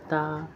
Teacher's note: ता जबान की नोक को ऊपर के अगले दो दांतों के जड़ से लगाकर अदा होता है। ता ता की आवाज फारिक होती है।